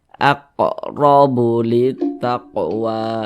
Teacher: Ini huruf ra nih, di atasnya nih tanda baca fathah nih namanya nih, atau harokat fathah. Huruf ra memiliki tanda baca fathah, maka dia dibaca tebal, dibaca tabkhim, sehingga pangkal lisan kita itu naik terangkat ke atas ketika kita mengucapkannya. Huruf ra-nya kita tebalkan.